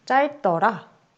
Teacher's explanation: 짧더라 이렇게 비읍이 없고 리을만 발음이 됐죠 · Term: 자음군 단순화